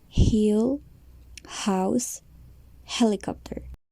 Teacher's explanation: It is made by passing air through your mouth, and your vocal cords will not vibrate.